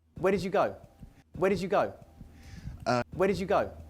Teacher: it's almost impossible to hear did in this question